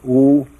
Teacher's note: Om pronounced starts in the back of the mouth, then fills the mouth cavity, oo, and closes at the lips